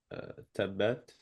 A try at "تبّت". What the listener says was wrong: So in the shadda, try to hold that just a little bit longer. Tabbat, tabbat, tabba. Try to ensure that you're holding that back just a bit. Tabbat.